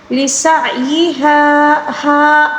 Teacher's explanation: ہا کے بعد جو خالی الف ہے اس کو الف مدہ کہا جاتا ہے، اس کو ایک الف کے برابر کھینچ کر پڑھیں گے